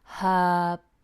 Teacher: if you say it's her bag beginning with a consonant sound we'd say her bag and the letter R doesn't appear at all